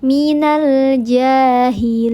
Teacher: ada huruf jim yang harakatnya fathah berdiri. Dibacanya panjang dua harakat. Namanya mad th'i muqaddar atau mad asli.